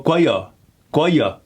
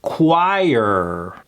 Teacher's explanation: A lot of people have a tendency of dampening that high I sound.